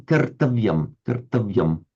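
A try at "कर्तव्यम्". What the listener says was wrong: I thought I detected a slight hint of a French accent there. Did you say something like cartavium? Did I detect a slight hint of French there? Cartavium. Cartavium.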